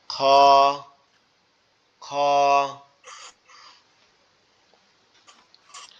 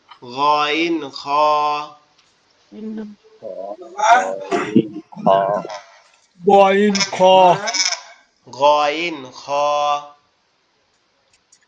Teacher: গইন এবং খ হচ্ছে আমাদের কণ্ঠনালীর শেষ ভাগ, অর্থাৎ আমাদের গলার সাথে আমাদের মাথার যে অংশটা লেগে আছে এখান থেকে উচ্চারণ হবে এরকম ভাবে, খ, খ।